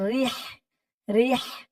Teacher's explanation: র দিয়ে হা ধরবে, র হাজের রিহ, রিহ, হার আওয়াজটা গলার ভেতর থেকে চিকুন করে বের করতে হবে